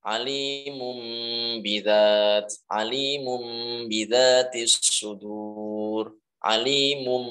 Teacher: praktiknya adalah nunnya ini diubah menjadi huruf mim. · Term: iqlab